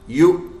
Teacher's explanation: واو زائد ہے، واو کی آواز نہیں آئے گی، صرف حمزہ کی آ رہی ہے